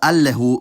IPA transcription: alːɛhu